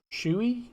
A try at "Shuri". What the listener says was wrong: Yeah. In a way, but you have to like hit the R, so it's like Shuri. Yeah, it's like Shuri. It's pronounced different ways, but in a way, it sounds more like Shuri.